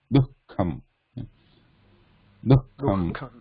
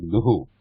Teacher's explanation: Dukkham is a half Visarga actually, because there is a Kha afterwards. So we are not pronouncing this Visarga completely here, like Duhu.